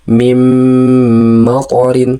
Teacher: Jadi nunnya dilarikan ke huruf mim. Melebur itu namanya. Sementara huruf mimnya didengungkan. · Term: idgham bigunah